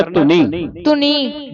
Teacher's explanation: ਕਈ ਸੰਗਤਾਂ ਧੁਨੀ ਪੜ ਜਾਂਦੀਆਂ ਅਧਕ ਲਾ ਕੇ ਇਹ ਪੋਲਾ ਉਚਾਰਨ ਕਰਨਾ